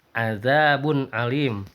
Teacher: Bunnya itu jelas ya, tanpa disertai dengan dengung ataupun disamarkan, tidak, tetapi azabun alim. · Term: ijhar